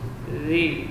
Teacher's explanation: Zi huruf za, rakhawah dan jahar. Zi mengalir suara, ujung lidah di ujung gigi seri atas. Zi panjang 2 harakat.